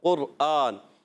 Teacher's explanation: جو موٹا قاف ہے قرآن والا قاف، قرآن، تو وہ جو ہے اس کا مخرج ہوتا ہے زبان کی جڑ اور تالو کا نرم حصہ